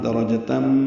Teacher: تنوین کے بعد میم آنے کی وجہ سے ادغام ہے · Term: ادغام ناقص